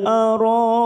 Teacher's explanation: ada Mad yang bertemu dengan Hamzah dalam satu kalimat mad wajib muttasil empat harakat kita panjangkan